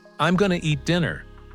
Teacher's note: 3 changes happened at once. I am became I'm, going to became gonna. The words connect into one rhythm, almost like music. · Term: connected speech